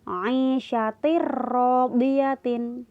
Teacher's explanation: yang berwarna merah ini contohnya tanwin ketemu huruf ro ok Hai tanwinnya seakan-akan hilang langsung masuk di huruf ro